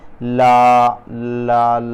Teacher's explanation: जीभ का जो पिछला हिस्सा है उसके बगल से हवा निकले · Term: पार्श्विक व्यंजन